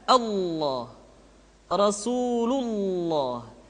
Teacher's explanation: Lafaz Allah dimanapun kapanpun, maka lam yang terdapat pada lafaz jalalah tersebut mesti ditebalkan.